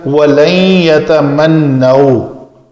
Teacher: نون کا اس یا کے اندر ادغام ہوا ہے کیونکہ یہ حروف یرملون میں سے یا ہے.